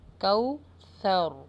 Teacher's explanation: یہاں پہ سا کا مخرج لگے گا، سین کا نہیں لگائیے گا جیسے لوگ عموماً پڑھ دیتے ہیں کوثر، نہیں یہ غلط ہو جائے گا، کوثر۔